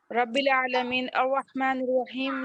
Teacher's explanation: وقفی اسی لیے کہا جا رہا نا، عارض وقفی، عارضی طور پر ہم وقف کر رہے ہیں تو وہاں پر مد کی طرح کھینچیں گے، مد لازم کی طرح